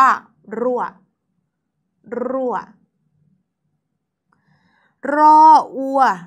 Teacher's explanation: รั่วใช้รเรือเวลาอ่านจึงต้องกระโดดลิ้นเล็กน้อยนะคะ